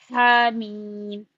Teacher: हा का मखरज जो है दरमियानी हलक से क्लियर अदा करें।